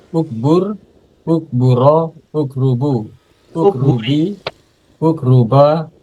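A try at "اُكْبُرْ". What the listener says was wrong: Bapak mohon maaf, hurufnya tertukar, bukan karuba, tapi kaburo.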